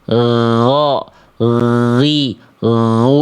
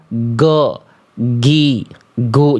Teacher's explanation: Dirasakan suaranya itu ngalir, ditekan tapi agak direnggangkan sedikit. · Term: huruf ghain